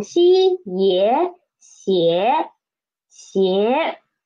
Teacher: And the initial is xi and the final is ye and the tone is second tone.